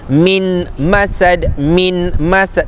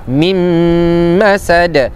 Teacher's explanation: Jangan baca nun yang mati jumpa dengan mim. Jadi jangan baca min masad, tak, tapi mim masad, idgham ma'al gunna.